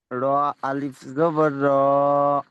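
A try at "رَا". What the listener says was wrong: আর আর একটু টান দেন, হয়েছে টান, আর একটু টান দেন। র আলিফ জাবার র, টান দেন। এটা এর মধ্যে কোনটা টান হবে, প্রথমটা না মাঝখানেরটা না শেষেরটা?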